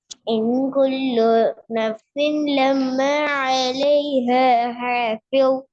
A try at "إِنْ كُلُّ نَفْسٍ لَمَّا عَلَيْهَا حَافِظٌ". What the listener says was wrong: இல்ல வரல. ஹேரியும் பெரிய ஹேரிக்கும் உள்ள வித்தியாசம் வரல. عليها حافظ. அந்த ரெண்டு ஹே தான் முக்கியம். عليها حافظ.